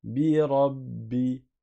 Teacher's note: C'est comme si tu avais un ba avec soukoun suivi d'un ba avec kasra. Donc tu vas rester le temps du ba avec soukoun plus le temps du ba avec la kasra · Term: shadda